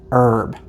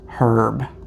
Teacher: in the U.S we say herb the H is silent however British people say herb